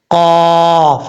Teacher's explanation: اس قاف کا مخرج ہے زبان کی جڑ اوپر والے تالو کے نرم حصے سے لگے تو قاف پڑھا جاتا ہے